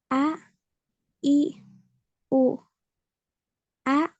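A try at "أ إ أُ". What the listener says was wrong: Hati-hati ya untuk penyebutan hamzah. Nah, itu jangan sampai ada seperti huruf hamzah lagi di belakangnya. A, I, U. Nah, jadi berhenti ya. Berhentinya suara itu bersamaan dengan udaranya ya. A, I, U.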